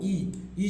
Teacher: 93 का आंसर क्या होगा तो याद रखिएगा तालु है बाबू ई ई जो होता है तालु से बोला जाता है